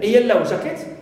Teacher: But if I refer to it as a noun phrase and I say a yellow jacket, it means any jacket which is yellow in color, here I stress second element, jacket.